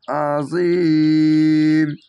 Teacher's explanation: শেষ অক্ষর সাকিন দিবেন, 3 আলিফ টেনে পড়বেন। কেন?